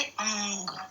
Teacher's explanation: इसका उच्चारण मुंह और नाक दोनों से होता है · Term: अनुनासिक